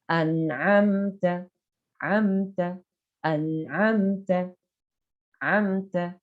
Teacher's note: Ya, jadi ketika ada mim mati bertemu dengan selain mim dan ba, maka cara membaca mim matinya harus dibaca dengan jelas. Izhar, tidak ada gunnah, tidak ada tahanan. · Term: izhar syafawi